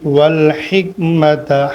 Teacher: ہا واضح کریں گے، حلق سے نکالیں گے